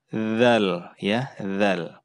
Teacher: Huruf dzal itu ujung lidah kita itu diletakkan di antara gigi atas dan gigi bawah. Kemudian diucapkan tanpa ada terdengar suara udara ya. Jadi ini juga jahar.